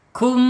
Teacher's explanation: Mim sukun menghadapi selain huruf ba dan mim izhar syafawi mimnya harus dibaca jelas